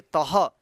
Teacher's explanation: त में विसर्ग लगा, यानी आह की मात्रा लगा है, तो त के बाद हम ह उच्चारण करेंगे